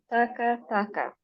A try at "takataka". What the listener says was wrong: Just say it together. Don't separate it. Just say taka taka.